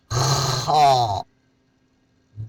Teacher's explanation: خا کا مخرج حلق کا وہ حصہ جو اوپر منہ کی جانب ہے